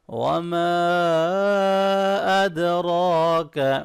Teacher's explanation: را کو موٹا پڑھیں گے، کھڑی زبر ہے، تھوڑا سا اس کو لانگ بھی کریں گے۔